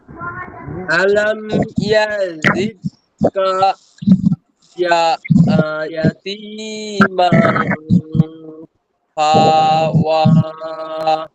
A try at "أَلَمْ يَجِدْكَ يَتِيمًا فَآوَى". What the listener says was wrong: হাতে টান হবে না, আতে টান হবে।